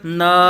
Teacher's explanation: نون کی بھی ناک میں آواز نہیں جانی چاہیے